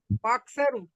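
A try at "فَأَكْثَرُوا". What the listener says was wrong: آپ نے یہاں مسٹیک کی ہے. حمزہ کیوں کھینچے گا؟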